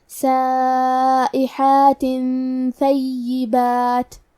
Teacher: سائحات ثیبات، کلمت ثیبات میں حرف الثا کی ادائیگی زبان کے سر اور اوپر والے دانتوں کے اندرونی کناروں سے ہے. حرف الیا پہ تشدید ہے تو ہمیں 2 حرف کے برابر یا کو پڑھنا ہے